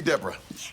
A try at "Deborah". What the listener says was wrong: It's Deborah. No, you said Deborah with 2 syllables. It's Deborah with 3 syllables. Emphasis on the aura.